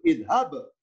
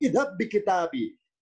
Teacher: dengan dihilangkannya bunyi pantulan, dengan dihilangkannya bunyi qol-qolah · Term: idgham